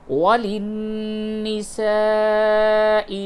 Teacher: حروف مد کے بعد حمزہ اسی کلمے میں ہے، اس لیے موٹی مد لکھی گئی ہے، اس کو تھوڑا زیادہ کھینچیں گے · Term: مد متصل